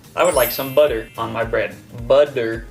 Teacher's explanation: butter it sounds like b u d d e r instead of TT